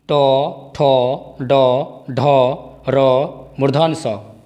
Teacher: री, ट, ठ, ड, ढ, र, मूर्धन स। इन सभी वर्णों का उच्चारण स्थान मूर्धा है।